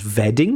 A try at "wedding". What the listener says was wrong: wedding has a W sound, not a V sound.